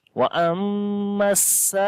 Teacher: And this mad again, mad muttasil, after the madda letter, the next letter is Hamza in the same word. So we will say mad muttasil, which we long 3 to 5 alif